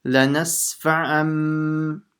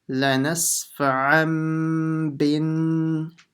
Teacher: this n sound from the tanween will change into a m, a mim sound